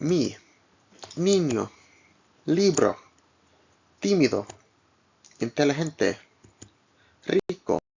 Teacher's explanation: Like the E in teeth, like the double E in teeth, or the I in machine, but shorter.